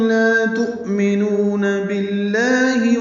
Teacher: تؤمنون میں حمزہ ساکن جھٹکے سے ادا ہوگا